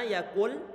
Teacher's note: Karena suara nunnya dimasukkan dalam suara huruf lam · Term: idgham bila gunnah